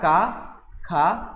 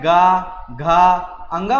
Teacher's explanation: जब मैं का और खा का उच्चारण कर रहा हूँ तो इसमें मेरे मुख से कंपन की ध्वनि नहीं आ रही है, लेकिन जब मैं गा, घा, अंगा बोलूँगा तो इसमें क्या है, कंपन उत्पन्न हो रहा है